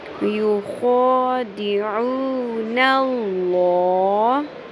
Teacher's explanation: اب یہاں پہ چونکہ اللہ کا لام ہے اور اس سے پہلے زبر ہے نون کے اوپر، تو ہم یہاں پہ اللہ کے لام کو بھی پر کریں گے